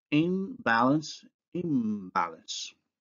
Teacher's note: N following B, that's an alveolar following a bilabial, and the nasal becomes bilabial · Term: nasal assimilation